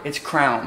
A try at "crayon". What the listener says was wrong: It's a crayon. It's literally spelled C-R-A-Y-O-N. Crayon. That's C-R-O-W-N.